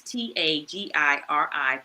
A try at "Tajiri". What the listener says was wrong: It's a J. I think you said G. It's Tajiri.